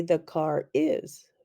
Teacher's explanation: in some dialects the r is linked to other words